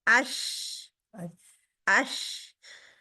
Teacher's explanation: जुबान भी दरमियान से उठी हुई है तो आवाज फैल जाती है। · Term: शीन